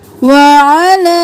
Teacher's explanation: عین کو گلے کے درمیان سے